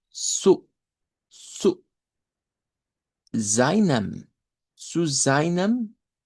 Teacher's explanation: es un sonido ts como un africado